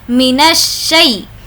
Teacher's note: ہم کو یہ نون کو شین سے ملانا ہوگا اور الف لام کو نہیں پڑھیں گے